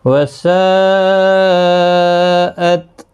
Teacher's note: یہاں پر ساءت یہاں پر بھی مد متصل ہے، 4 الف کی مقدار کے برابر کھینچ کر پڑھیں گے